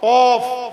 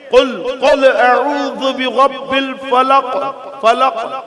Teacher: زبان کی جڑ اور تالو کے نرم حصے سے بڑی قاف ادا ہوتی ہے